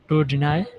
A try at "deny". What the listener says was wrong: Deny. All right, not Denny. Deny.